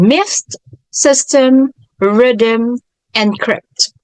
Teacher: the y vowel is pronounced as the E and having the IPA symbol of this capital i